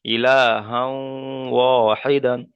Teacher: এখানে ইলাহাও ওয়াহিদান, এখানে হায়ের পরে দু জাবার তানবিন এসছে, তানবিনের পরে ওয়াও এসেছে, তানবিনের পরে হুরফে ইউমিনের চারটি অক্ষর মতো থেকে ওয়াও এসছে, তাই তানবিনকে ওয়াও এর সাথে মিলিয়ে একালিপ পরিমাণ গুণনা করে পড়তে হবে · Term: ইদগামে নাখিস